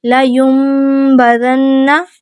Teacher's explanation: ہم نون ساکن کو میم سے بدل کر غنہ کر کے پڑھیں گے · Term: اقلاب